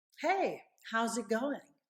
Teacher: that hey right has a high pitch to grab the person's attention I'm excited I'm enthusiastic hey and then how's it going a